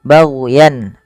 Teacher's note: Di mana kemudian lafal yan di sini ada izhar halqi, yaitu suara tanwinnya dibaca dengan jelas karena bertemu dengan hamzah baghyan, dan tidak boleh ada penahanan.